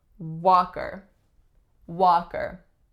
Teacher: the strongest syllable is the first syllable the sound that it makes is aa tense back low vowel